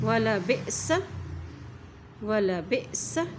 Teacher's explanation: जब हमज़ा के ऊपर जज़म आ जाती है तो वहाँ पर झटका दे के पढ़ते हैं।